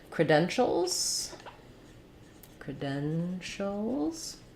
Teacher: me just now saying more of a schwaba like craft dentals it's just important that that first syllable is reduced and short and then my length and stress falls on the den syllable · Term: second syllable stress